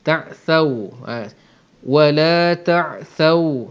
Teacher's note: Kalau waw kita matikan, jangan kedekut untuk muncung. Ta'thaw, kena muncung sebab waw ni kita tak boleh sebut dengan ringan sampai mulut tu langsung tak muncung. Ta'thaw tak jadi, dia kena muncung sebab makhraj dia ialah mulut.